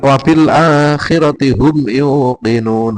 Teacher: humnya pendek karena izhar syafawi